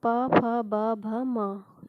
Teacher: ये ओष्ठ से बोले जाते हैं। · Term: पवर्ग